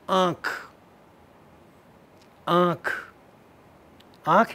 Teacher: The first vowel is nasalized. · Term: nasalization